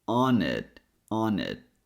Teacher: First thing I want to show you is how we connect on and it. It's like we're bringing the N sound to the word it.